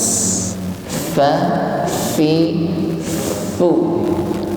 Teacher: ada nafas yang terlepas ketika mengucapkan huruf fa.